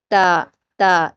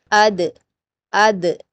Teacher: تا کا مخرج آپ کو یاد رہا ہوگا کہ ہم نے تا جو ہے نا وہ اوپر کے 2 دانتوں کی جڑ سے اپنی زبان کی نوک کو ملا کر ادا کیا تھا، تا تا۔ اسی طرح سے دال بھی ادا ہوگا، دال دال، اسی جگہ سے شروعات ہوگی دال کے مخرج کی، دال دال دال۔